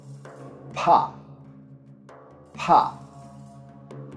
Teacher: a voiceless bilabial plosive and produced with the airflow blocked completely by the lips without engaging the vocal cords